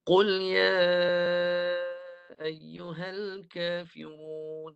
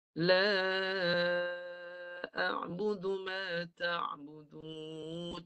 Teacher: 2 harakat je Mad Jaiz.